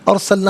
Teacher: ارسلنا میں را ساکن ما قبل حمزہ پر زبر، را ساکن کو پر کر کے پڑھا جائے گا۔